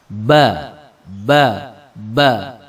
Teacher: Jadi kalau kita membacanya tidak keluar nafas. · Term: jahr, Jahra